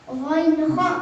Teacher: Ghain, kha, makhrajnya ujung tenggorokan.